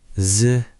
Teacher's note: there's a kind of fuller rounder sound when I curl my tongue